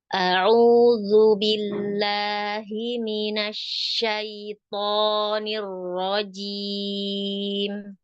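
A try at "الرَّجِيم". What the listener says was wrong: Aro-nya arojim. Kurangi sedikit getarnya tapi jangan sampai hilang.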